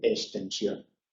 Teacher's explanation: cuando tenemos extensión, la tendencia es eliminar la K y decir extensión. Pero hay que escribir siempre la X.